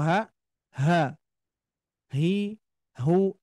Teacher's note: ketika kita membunyikan huruf huruf ha itu pita suara itu membuka ya membuka pita suaranya